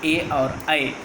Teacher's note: कंठ तथा तालु इन दोनों के सहायता से जिन स्वरों का उच्चार होता है वो संयुक्त स्वर ए और ऐ, इन दोनों स्वरों को कंठ तालव्य कहा गया है।